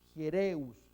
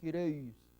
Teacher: Hiereus, es la iota, la E, la ro, la E, la Y. Acá va a sonar U porque está dentro de un diptongo, por eso es Hiereus, no Hireus, Hiereus, y sigma final.